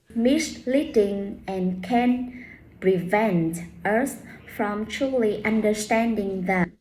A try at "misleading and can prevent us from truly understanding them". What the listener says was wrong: Just slow down. Slow down. Open your mouth a little bit more.